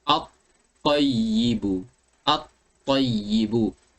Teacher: tak jelas bacaan lam tersebut sebab dah diidghamkan kepada huruf ta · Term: idghamul lam